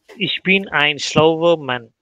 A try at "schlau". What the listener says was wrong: Not schau, not schau, schlau, schlau. There is L.